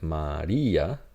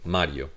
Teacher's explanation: so notice we have Maria so syllables go here and here so there is a split this will sound E A versus Mario this is going to be a Glide